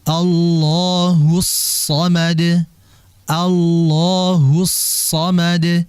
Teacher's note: ketika mengucapkan ha itu kan bibirnya monyong karena memang dia harokatnya dhammah